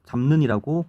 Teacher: 잡과 는과 잡는을 비교해 보면 잡에 있는 비읍이 미음으로 바뀌었다는 걸 알 수가 있죠